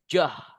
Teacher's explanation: Kalau d sama y ketemu suaranya jeh. Jah jah gitu guys ya.